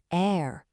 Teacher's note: the sound doesn't come from your tongue at all. It all comes from the very back of your throat. It's almost like a tiny gentle gargle. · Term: French R